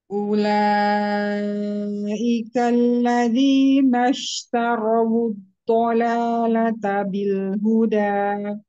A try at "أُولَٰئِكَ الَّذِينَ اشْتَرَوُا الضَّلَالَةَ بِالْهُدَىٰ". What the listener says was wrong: Ya, ulai ika nggak mau nyeret ya. Ulaika alladzina ishtarawud ada tebal. تروا الضلالة بالهدى. تروا الض تروا الضلالة بالهدى.